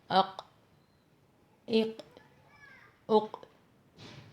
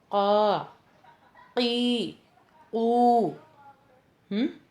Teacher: زبان کی جڑ جب نرم تالو کو چھوتی ہے تو قاف ادا ہوتا ہے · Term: حرف قاف